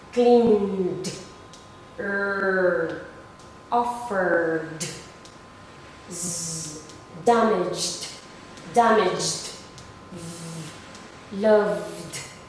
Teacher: So they are all vibrating. So they are all voiced.